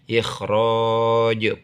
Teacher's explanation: Kho mengeluarkannya seperti mengeluarkan dahak. Ikhraj karena kho dari adnal halki.